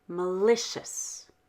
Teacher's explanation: Malicious has a clear L, even though the L is in the middle of the word, because the L is at the beginning of the stressed syllable.